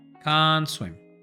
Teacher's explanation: cuando quitamos esta T, unimos ambas palabras. Va a sonar pegado.